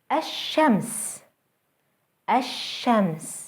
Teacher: notice how the Sun letter is doubled and how the L Sound is lost